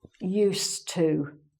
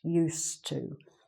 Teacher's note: it's spelt with the D, but it's not really pronounced, used to. So this is something, the meaning of this, it's quite different from the other, to get used to be used to.